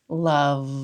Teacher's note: feel a buzzy vibration on that lower lip where it's making contact with the upper front teeth